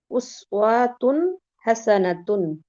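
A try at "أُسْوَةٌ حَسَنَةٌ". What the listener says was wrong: উস ওয়াতে টান হবে না, হরকতে কোনো টান হবে না। উস ওয়াতুন হাসানাতুন।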